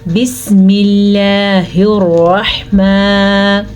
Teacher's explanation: را کے اوپر زبر ہونے کی وجہ سے را کو ہم پر پڑھیں گے، اور ہا کا تلفظ آپ نے ٹھیک طرح سے ادا کرنا ہے۔